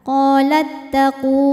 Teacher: sebab ada wau sukun yang sebelumnya berharakat damah cara bacanya panjang dua harakat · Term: Mad Thobi'i